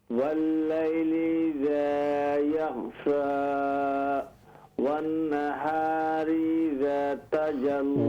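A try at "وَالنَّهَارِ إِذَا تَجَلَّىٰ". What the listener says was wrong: والنہار، غنہ کیجئے، دوبارہ پڑھیے، والنہار اذا تجلی، تجلی لام ایمٹی ماؤتھ سے، تجلی باریک لام ہے،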